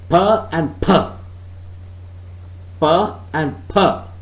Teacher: one is aspirated, the other one is not aspirated. First is unaspirated, second per is aspirated. But both are the allophones of the phoneme per.